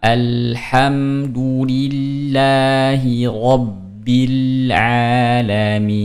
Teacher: huruf ain jangan lupa tengah tenggorokan